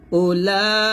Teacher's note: জের ই কাফ জবর কা উলাইকা এরকম পড়তে হবে উলাইকা তাহলে এরকম যত উলাইকা পাবেন এই উতে আপনারা টান দেবেন না